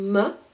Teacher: It's a labial sound, so close your lips Imagine that you're making ummm sound like this and open your